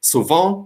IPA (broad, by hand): su'vã